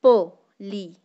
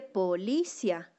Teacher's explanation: ¿Ven que tiene mayor intensidad la vocal débil con tilde? Se escucha mucho más fuerte.